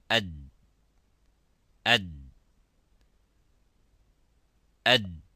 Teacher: So the sound stops within its makhraj, within its point of articulation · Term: dal